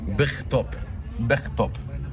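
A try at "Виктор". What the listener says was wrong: Victor. The B is a V. and it's inverted here.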